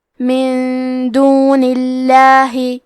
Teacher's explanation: کلمت دونی کے آخری میں نون کے نیچے زیر ہے، لہذا لفظ الجلالہ مطلب کلمت اللہ کے لام کا حکم ہے ترقیق، تو ہمیں حرف اللام کو پتلی آواز میں پڑھنا ہے